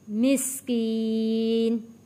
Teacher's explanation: یا ساکن ہے، یا ساکن سے پہلے زیر ہے، حروف مدہ ہے، یہاں اس لیے کھینچ کر پڑا ہے